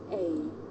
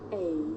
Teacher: a diphthong a double vowel sound the shape the mouth makes changes from the beginning of the sound to the end